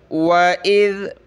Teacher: ذال پہ تھوڑی سی زبان باہر